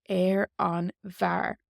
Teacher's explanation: Far is man, on the man would be air on var. So F takes a BH, and then we lose the F sound and we just hear a V sound.